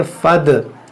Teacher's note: और दाल में कलकला भी करेंगे